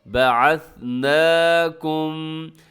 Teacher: یہاں پر بھی آپ نے سیٹی کا خیال کرنا ہے کہ اس میں ثا ہے اور ثا میں سیٹی نہیں ہوتی۔